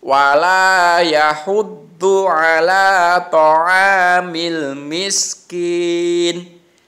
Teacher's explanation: Karena berhenti maka ni-nya itu disukun alias mati.